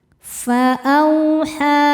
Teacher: A au ada harfulin karena ada wau sukun sebelumnya fathah. Cara bacanya dilembutkan atau dilunakkan.